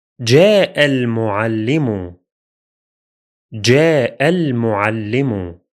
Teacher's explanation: When reading them together, there will be a connection, wasl. So we move directly from the final hamza in the first word to the lunar lam in the second word, as if the two words were one unit